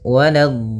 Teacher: la-nya jangan sampai tebal, jangan waladh, tapi la-nya tipis